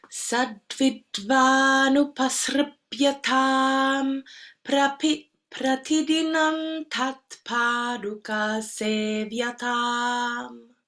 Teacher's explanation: Make sure the anuswara lands on dental.